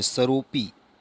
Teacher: અહીં વપરાયેલા આ અવગ્રહ ચિહ્ન ઉપરથી સમજવાનું છે કે ઓ વર્ણમાં પાછળ અ વર્ણ ભળી ગયો છે। જ્યારે ઓ વર્ણનું ઉચ્ચારણ કરવાનું થાય ત્યારે ઓ વર્ણ ઉપર થોડોક ભાર આપવાનો છે